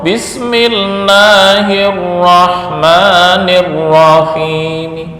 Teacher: Tapi kalau wakaf raum, Bismillahirrahmanirrahim. Hi pendek, hanya 2 harokat, nggak bisa lebih. Jangan Bismillahirrahmanirrahim.